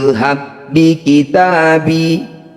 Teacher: ba dua huruf yang sama persis bertemu disebut bacaan am mutamsilin cara bacanya bunyi huruf pertama masukkan pada huruf kedua tanpa dengung